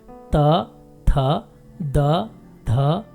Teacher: जी हाँ, इन व्यंजनों का उच्चारण दंत्य स्थान है, अर्थात जीभ की नोक को दांतों से स्पर्श कराकर पहले वायु को रोकते हैं, फिर जीभ को उठाकर वायु को निकलने देते हैं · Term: दंत्य व्यंजन